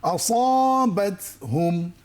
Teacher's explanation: এবার পরে দেখি এটা, আসাবাতহুম এখানে সদের মধ্যে দুটো কাজ করতে হবে, সদ মোটা করে পড়তে হবে এবং শীষ দিতে হবে